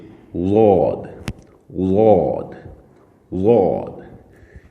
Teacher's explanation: بائیں طرف، اوپر والی جو داڑھیں ہیں ان کی بائیں طرف اس زبان کو سائیڈ پر اوپر داڑھوں کے ساتھ لگائیں گے اور لفظ کو تھوڑا موٹا کر کے ادا کریں گے